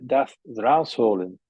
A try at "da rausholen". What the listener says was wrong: Ja, da, this is there. Not das, ja. rausholen. As in from there.